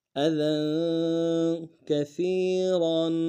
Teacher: دال کے اوپر تنوین ہے، غنہ کریں گے، اور دال کو باریک ادا کریں گے · سا کو یا کے ساتھ ملانا ہے، باریک ادا کرتے ہوئے ، اور یا مدہ بھی ہے، ایک الف دال میں کھینچیں